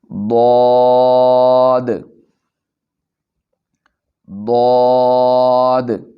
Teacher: زبان کی کروٹ کو اوپر کی داڑھوں کی جڑ سے ملائیں گے۔